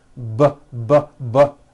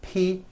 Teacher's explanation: the only difference is my vocal cords are either vibrating or they're not vibrating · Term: voicing